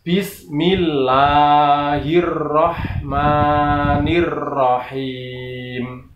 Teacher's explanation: berhenti mingkem ini bibir, kemudian langsung berhenti, suaranya habis, tidak ada ekornya atau buntutnya atau dengungnya